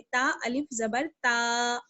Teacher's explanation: इसको हम ता जबर ता नहीं पढ़ेंगे या ता अलिफ जबर ता नहीं पढ़ेंगे, बल्कि थोड़ा सा खींचना पड़ेगा हमें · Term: अलिफ मद्दा